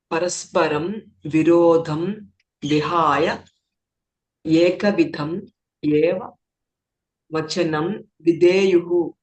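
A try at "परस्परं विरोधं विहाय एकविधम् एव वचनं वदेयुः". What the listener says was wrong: Vadeyuhu. Without pause. Without pause in between the words. Parasparam virodham vihaya ekavidam eva vachanam vadeyuhu. I don't know how you paused parasparam virodham vihaya, intelligent reader.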